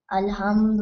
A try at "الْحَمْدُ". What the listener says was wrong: Alhamdu with a ha right here. Say it again.